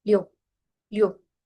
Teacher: Se convierte en un I-U, I-U, Liu, Liu. Es como una O cerradita, más redondeada